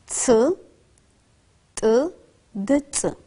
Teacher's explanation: Çıkış yerlerine göre üçü de diş eti ünsüzleridir. Bu ünsüzlerin çıkış yeri dışarıdadır.